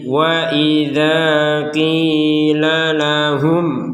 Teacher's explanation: sukunnya tertulis ya sukunnya tertulis maka dibaca dengan jelas kum jelas mim sukunnya dibaca dengan jelas kemudian langsung ke Hamzah